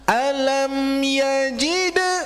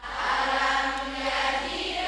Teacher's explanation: ingat qolqanya bu dipantulkan heula. Entong langsung yajid kayati Bu.